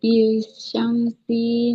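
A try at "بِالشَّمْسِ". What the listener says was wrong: Eh, Bisyamsi. Nah, sinnya kasroh. Nggak ada ya-nya. Berarti nggak boleh dibaca panjang ya. Bisyamsi. Nah, bisyamsi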